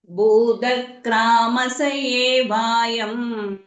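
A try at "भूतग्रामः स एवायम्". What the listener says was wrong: கிராமஸ்ஸ இஸ் போட்டுக்கோங்க, ஏன்னா அங்க விசர்க்கம் இருக்கு. பூத கிராமஸ்ஸ ஏவாயம்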